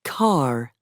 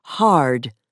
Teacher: Most Americans also pronounce the R at the end of words, for example, car, and before a consonant, for example, hard, as the early settlers did.